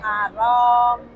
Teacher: Rnya itu ro dibaca tebal. R tebal.